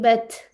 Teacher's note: और देख लेते हैं, नून दम्मा नू, صاد كسرة صي، نوسي، با فتحة سكون بت، नूसीबत, ठीक है। यानी ये जो ता होता है ना साकिन वाला, इसकी एक क्वालिटी होती है, इसमें हम्स की आवाज आती है, ठीक है, यानी कि सांस की। तो इस तरह की आवाज आएगी बत, ठीक है।